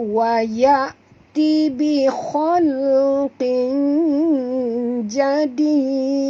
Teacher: Kita matikan pada dal, dia menjadi mad arid lis sukun, dan pada dal ni dia ada lantunan yang keras sikit, dinamakan qalqalah kubra, ya. Ini qalqalah kubra, bukan akbar kerana tidak ada tasydid di atas dia.